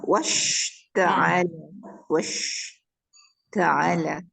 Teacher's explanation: Kalau kita tengok shin, tengah lidah mesti naik sebab nak pergi ke makhraj dia, tengah lidah, tengah lelangit.